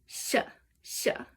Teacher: what is written as s is kind of like sh it's kind of like right in between an S and an sh in English so you're putting your tongue on the alveola ridge which is